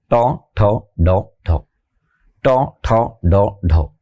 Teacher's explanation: জিহ্বা ঠিক উল্টা পাশে উপরে উঠে যায়, জিহ্বার ঠিক উল্টা পাশে লম্বা লম্বা কয়েকটা খাসকাট আছে, ভিট, উঁচু জায়গা আছে, এটাকে বলে মূর্ধা। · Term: মূর্ধন্য বর্ণ